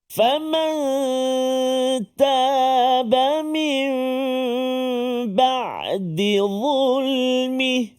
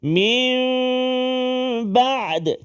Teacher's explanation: menukarkan bunyi nun itu kepada mim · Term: Iqlab